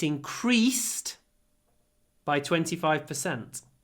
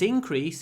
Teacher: increased stresses on the E when it's a verb increase stresses on the I when it's a noun it increased there was an increase and when we pronounce this